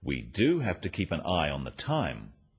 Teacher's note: the emphasis on the word do